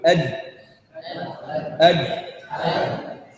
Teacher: أما الدال والتاء فيصطدم في الأصل يضم بعض السن ويضم بعض اللثة